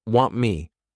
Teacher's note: produce one new word what becomes what now want me here all we're doing is we're not pushing out that t sound this is called a flat T